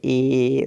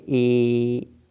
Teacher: ए मतलब होंठ जो है फैल गया, मुंह जो है हल्का सा पिचक गया, और जीभ जो है स्थिति जो है बीच में हो जाती है। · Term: अर्ध संवृत्त